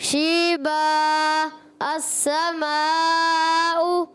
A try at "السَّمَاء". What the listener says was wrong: Good, مد کو اور کھینچا کریں. السماء.